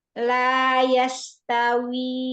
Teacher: tipiskan, tajamkan. Jangan sampai ada terdengar suara menyebar. Jadi kayak syin nanti. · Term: sin